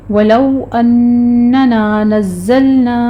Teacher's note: ہم غنہ کریں گے، نون مشدد ہے، غنہ واجبہ ہوگا، اور پھر نا میں الف پورا ادا کرنا ہے آپ نے، الف مدہ ہے